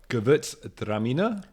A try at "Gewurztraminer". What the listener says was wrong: Not just Gewurztraminer. You got to have a pause in between.